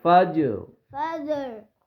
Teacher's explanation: فجر را کی بھی آواز آئے گی ہلکی سی